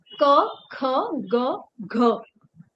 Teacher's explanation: क ख ग घ वो एक जगह से आवाज निकल रही है कंठ से